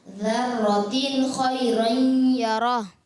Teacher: تنوین کے بعد خا آنے کی وجہ سے یہاں پر اظہار ہلکی کا قاعدہ ہو، غنہ نہیں کریں